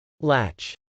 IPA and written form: lˈætʃ (latch)